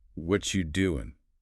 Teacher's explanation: The phrase what are you collapses into 1.5 syllables. · the T blending with the Y sound creates that she sound